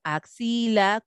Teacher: Si nosotros la encontramos intervocálica o al final de la palabra, nos podemos encontrar con este sonido de KS